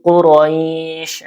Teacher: Jadi kalau ada madlin ee ada ya sukun sebelumnya fathah kemudian setelahnya ini sukun ya karena ini diwakaf jadi disukunkan tanwinnya. Jadi ee hukumnya madlin panjangnya dua atau empat atau enam harakat